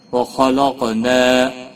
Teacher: وَخَلَقْنَا، خا حروف مستعلیہ میں سے پر پڑا جائے گا، قاف بھی حروف مستعلیہ میں سے ہے، پر پڑا جائے گا، اور قاف حروف قلقلہ میں سے بھی ہے، اس پر قلقلہ بھی ہوگا۔ نا الف مدہ ہے، ایک الف کے برابر کھینچ کر پڑھیں گے۔